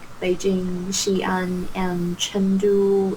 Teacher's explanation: Notice the intonation, up, up, down on the last one.